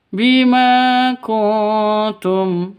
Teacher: nun mati bertemu dengan ta cara bacanya samar didengungkan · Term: Ikhfa Hakiki